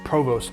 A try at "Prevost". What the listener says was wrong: you're saying that wrong. I think it's Prevost. It's P-R-E. No. There's an E.